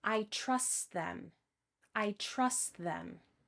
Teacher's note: drop the final T to make the pronunciation easier